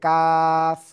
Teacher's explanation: জিব্বার গোড়া থেকে একটু আগে বাড়িয়ে তার বরাবর উপরে তালুর সাথে লাগিয়ে